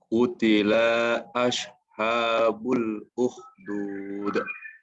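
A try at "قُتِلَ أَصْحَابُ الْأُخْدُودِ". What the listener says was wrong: Nah, pertama lam harus pendek ya. Qutila masuk. Kemudian selanjutnya adalah makhraj pada shad ya. Yang barusan terdengar itu lebih dekat kepada makhrajnya shin. Asha, utila asha. Nah, ini dekat dengan shin. Yang benar adalah utila aus. Dia sama seperti S ya. Penyebutan Indonesia sama seperti S, tapi S yang di-O-kan. Ya, ada ditebalkan.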